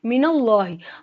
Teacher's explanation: اللہ کے لام کو موٹا پڑھیں گے، اللہ کے لام سے پہلے زبر ہے، اللہ کے لام پہ کھڑی زبر ہے، الف کے برابر لمبا ہوگا.